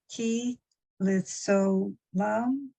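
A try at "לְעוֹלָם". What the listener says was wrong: Olam. That's an ayin, not leolam.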